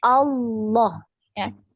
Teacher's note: Nah, karena tebal ya, naik pangkal lidahnya naik maka dia terdengar tebal ya, seperti ada huruf waw padahal tidak ada.